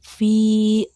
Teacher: Kemudian yang ketiga ada fi, terdapat hukum tajwid mad asli atau mad tobi'i karena setelah huruf berharakat kasroh terdapat huruf ya berharakat sukun dan sama dibaca 2 harokat